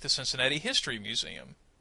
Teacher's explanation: I emphasize the word history but I made it sound as if it's kind of an idea that belongs together I didn't put any pauses between any of the words I tried to make them sound like they belong together now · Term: thought group